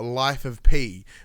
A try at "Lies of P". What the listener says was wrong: Lies of P. Lies, not life. Lies.